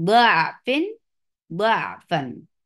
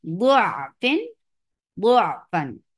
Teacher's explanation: سو حرف ضاد پر فتحہ کے ساتھ ضعفن، ضعفن۔ اور دوسرا طریقہ ہے حرف ضاد پر ضمہ کے ساتھ